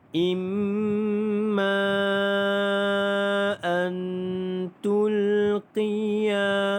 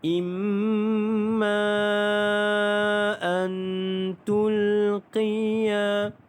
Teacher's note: huruf mim yang ada tanda syaddah didengungkan 2 harakat, iaitu wajibul gunnah